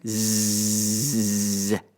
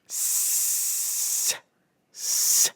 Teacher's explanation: Say zzz. Feel the vibration. Now say s, s. Nothing, just air. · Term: voiced